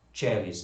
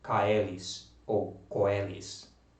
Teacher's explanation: porque sempre vai se pronunciar com som de E. Simples assim. Então você nunca vai dizer ai, oi. Você simplesmente vai dizer E.